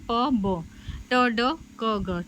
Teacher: उसका तरीका क्या होता है तो इसमें सबसे पहले है स्पर्शी इसमें वायु प्रवाह देर के लिए पूरी तरह से अवरुद्ध होता है फिर पीछे छोड़ दिया जाता है